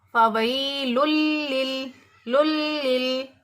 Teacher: نون کی آواز کو ناک میں نہیں لے جائیں گے، بلکہ صرف لام کو لام کے ساتھ ملا دیں گے، ملا کر پڑھیں گے۔ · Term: ادغام